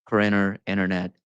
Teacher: T and N have the same point or place of articulation in the vocal tract